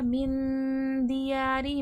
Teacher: من میں اخفا ہو رہا ہے، نون کی آواز چھپے گی